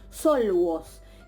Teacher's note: El ejemplo de la líquida lateral, L en contacto con la vau intervocálica, también se va a producir una asimilación y nos queda solamente como resultado la L, la lambda.